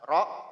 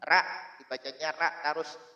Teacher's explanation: yang semestinya dibaca dengan tebal, ro, kalau pakai bahasa Indonesianya itu huruf O, bukan huruf A